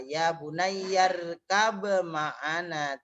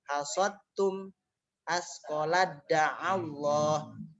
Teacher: huruf yang pertama dimasukkan ke dalam huruf yang kedua, dibacanya tanpa disertai dengan guna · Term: idgham mutajanisen